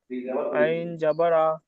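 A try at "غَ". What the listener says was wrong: আইন নয়, আইন, আইন খালি হয়, গয়েনের উপরে এক নক্তারা, গইন, গইন, আইন নয় ভাই আমার, গইন, গইন, গইন, গইন।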